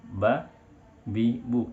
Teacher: Makhraj huruf ba berada di dua bibir, bibir atas bertemu dengan bibir bawah. Cukup kita rekatkan bagian atas dengan bawah, ba, bi, bu.